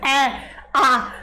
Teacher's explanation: आप बोल के देखोगे तो आपका मुंह बहुत ज्यादा खुलता है। तो ये विवृत वर्ड होते हैं।